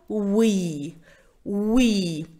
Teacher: на английском вы уи буква W дает нам уникальный звук в губки сводим и разводим это не звук в это звук вы